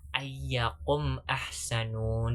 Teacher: huruf mim sukun bertemu dengan huruf hijaiyah selain huruf ba dan mim. Nah, dibacanya itu dengan jelas. Nah, saya contohkan dengan mim sukun bertemu dengan alif, yaitu ayyakum ahsanun. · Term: idhar syafawi